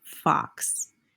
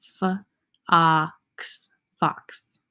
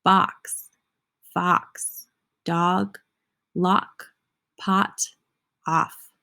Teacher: All have that ah, short O sound.